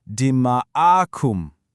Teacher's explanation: You hear that long ah sound right in the middle? That stretching of the vowel, that's a rule called madd. It literally just means prolongation.